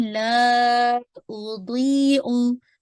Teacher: ला को आपने स्ट्रेच करना 4 to 5 काउंट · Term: मद्दुल जायज मुनफसिल